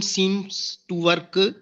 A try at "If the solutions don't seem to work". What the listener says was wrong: actually it is seem, it's not seems. You are read 2 times seems. If the solutions don't seem to work and does not seem to be happening, it's not seems.